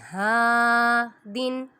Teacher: نون ساکن کے بعد ہا حروف ہلکی میں سے آ رہا ہے، یہاں بھی اظہار ہو رہا ہے، ادھر غنہ نہیں کریں گے